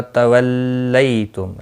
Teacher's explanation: ثم میم مشدد پر گنہ ہوگا. تولیتم، لئی یالین ہے، تھوڑا نرمی کے ساتھ کھینچ کر ادا کریں گے